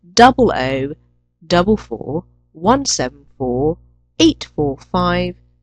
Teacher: use rising intonation for each group except for the last group, when you should use a falling tone. This shows you've reached the end of the number.